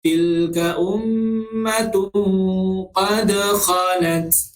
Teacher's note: huruf dal juga salah satu daripada huruf qalqalah. Jadi kita kena baca secara berdentak